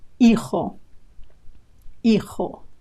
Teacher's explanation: Remember that the H in Spanish words is totally silent, as if it wasn't there. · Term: silent H